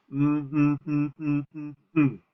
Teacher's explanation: my mouth is closed and the noise is coming out my nose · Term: ng sound